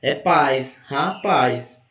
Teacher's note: Então, paz é a sílaba tônica de rapaz. Como é a última sílaba, então ela é oxítona.